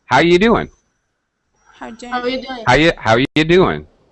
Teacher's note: end of a sentence it does it never gets reduced okay when we're normally speaking we often reduce you to yah